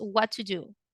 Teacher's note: Here we have 2 T's. The T of the word what goes silent. You don't say what to.